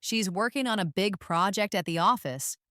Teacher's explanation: Notice how certain words are stressed. Working, big, project, and office.